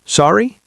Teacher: If you didn't hear what someone said, you can just say, Sorry, with a rising tone at the end